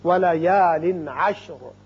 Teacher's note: یہاں تنوین کے بعد عین جو کہ حروف حلقی میں سے ہے آ رہا ہے، لہذا یہاں اظہار حلقی ہوگا